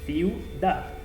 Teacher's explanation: Porque aquí tengo las dos vocales cerradas. Por lo tanto, forman un diptongo y se pronuncian en una misma sílaba